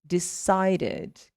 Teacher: when you have decide that ends with a D sound, the past will also sound like id.